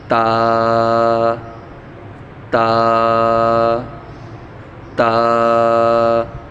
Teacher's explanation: تا کو بھی ہم 1 الف کے برابر کھینچ کر پڑھیں گے